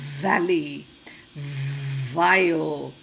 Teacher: the v is a vibrating sound